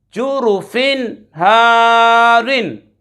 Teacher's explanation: جروفن ہارن، جروفن ہارن، جیم پیش جو، را پیش رو، جرو، فا دو زیر فن، جروفن، ہا الف زبر ہا، را دو زیر رن، ہارن، جروفن ہارن۔ یہاں پر 2 زیر کی تنوین کے بعد ہا حرف حلقی میں سے آ رہا ہے، غنہ نہیں کریں گے، ظاہر کر کے پڑھیں گے۔ یہاں پر الف سے پہلے ہا، الف سے پہلے زبر ہے الف مدہ، اور را کی نیچے 2 زیر ہو تو را کو باریک پڑھتے ہیں، جروفن ہارن۔